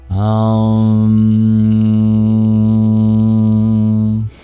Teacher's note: at the end of Om, you can even open your lips a little and you'll have a nasalized sound.